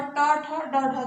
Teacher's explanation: ट, ठ, ड, ढ जो होता है वो मूर्धा से बोला जाता है